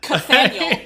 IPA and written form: kəˈθæn.jəɫ (Kathaniel)